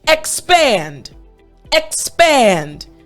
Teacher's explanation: You're going up very high and then you come down, but you're doing it very quickly. So again, when you're saying the X part, you're going up. Then you have the pand and you're coming down. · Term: inflection